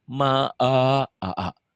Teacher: Kau tadi ma'a jadi ke hidung. Ma'a mulutnya dibuka.